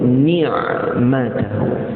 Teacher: Ni' itu condong, macam orang sebut inna ni'matahu, bukan ni'matahu. Ni'matahu panjang dua harakat, kita namakan dia mad silah